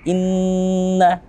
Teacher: kita mendengungkan suara kita. Suara kita mana? Suara yang khayshum, suara yang melewati hidung kita. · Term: ghunnah